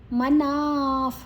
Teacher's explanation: ಮನ ಆದ ನಂತರ ವಿಸರ್ಗದ ಉಚ್ಚಾರಣೆ ಫ್, ಮುಂದಿನ ಅಕ್ಷರ ಪ ಇದೆ